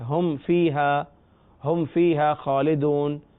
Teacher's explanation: میم ساکن کے بعد فا آ رہا ہے، یہاں غنہ نہیں ہو رہا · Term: اظہار شفوی